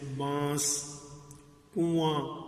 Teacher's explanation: بھی پتہ چل جاتا ہے کہ اس میں نون ہے لیکن نون کی آواز پوری طرح جو ہے وہ ادا بھی نہیں کی جاتی